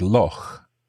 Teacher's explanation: this CH that you make in your throat, this doesn't exist elsewhere in English. It's a Scottish word.